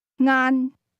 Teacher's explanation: The word lunch is pronounced with a mid-level tone.